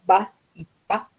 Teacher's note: son consonantes oclusivas no porque se produce un cierre del aire